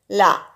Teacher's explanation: நாவின் இரு பக்கங்கள் தடித்து மேல் பற்களின் அடியை தொடுவதால் தோன்றும் எழுத்து